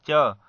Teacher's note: जिसकी परिभाषा को देखेंगे, तालु और जीभ के स्पर्श से बोले जाने वाले व्यंजन जीभ के मोटे वाले भाग और तालु के स्पर्श से जो बोले जाते हैं उसे हम तालव्य व्यंजन कहते हैं